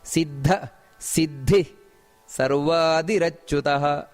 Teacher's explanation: ಸಿದ್ಧ, ಅಲ್ಲಿ ಮಹಾಪ್ರಾಣ ಇದೆ, ಅದರೊಟ್ಟಿಗೆ ವಿಸರ್ಗ ಸಮೇತ ಇದೆ.